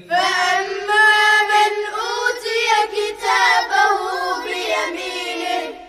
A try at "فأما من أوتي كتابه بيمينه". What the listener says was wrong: وين الغنة